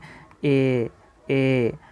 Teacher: कंठ और तालु ये दोनों चीज़ों से मिलकर उच्चारित होते हैं तो इसे हम कंठ तालव्य वर्ण कहेंगे।